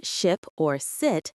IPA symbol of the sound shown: ɪ